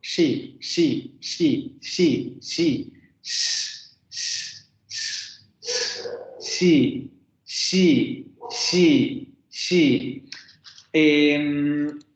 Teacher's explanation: La punta de la lengua se va a colocar en la parte postalveolar, es decir, en esa zona intermedia entre los alvéolos y el paladar, que prácticamente sería ese borde duro, pero el que tenemos un poco más atrás donde se siente el ahuecamiento del paladar antes de llegar a ese hueco del paladar. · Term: postalveolar fricativo sordo